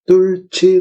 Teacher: 히읗하고 지읒이 만나서 치읒으로 발음됐으니까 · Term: 거센 소리 되기